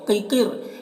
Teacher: یہ دونوں قاف کو پر پڑھنا ہے، حروف مستعلیہ میں سے ہے، را کو پر پڑھیں گے۔